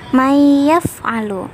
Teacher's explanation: Suara nun mati dimasukkan ke dalam huruf idgham, yaitu ya. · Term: idgham bi gunnah